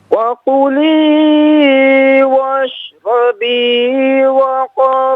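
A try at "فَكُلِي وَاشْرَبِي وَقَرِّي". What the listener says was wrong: بیٹا اس کو صاف پڑھیں. فَقُلِي وَاشْرَبِي. بیٹا واو نہیں ہے. فَقُلِي فا ہے.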